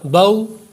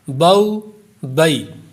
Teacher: اس میں چونکہ واو بہت زیادہ استعمال ہوا ہے تو اس لیے واو کا جو مخرج ہے وہ بھی ذہن میں ہونا چاہیے۔ واو کا مخرج ہے ہونٹوں کی گولائی، یعنی جب واو کو پڑھیں گے تو ہونٹ گول ہو جائیں گے